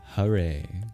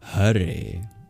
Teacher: The H is not the same as the English H. English H we don't voice. If an English person were to pronounce that word as it's spelled, they'd say Hare. · Can you hear the difference just on the H? You use your voice in the H rather than after the H is over.